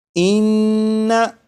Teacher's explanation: और आपने class number 2 में पढ़ा था कि नून मुशद्दद और मीम मुशद्दद में हमेशा गुन्ना होता है। तो यहाँ पर ये नून मुशद्दद है, इसलिए इस नून में गुन्ना करके पढ़ेंगे